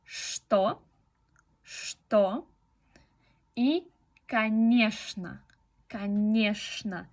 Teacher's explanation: la letra ch puede tener el sonido sh en estos dos casos.